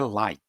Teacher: a gente vai querer colocar um sonzinho de vogal no final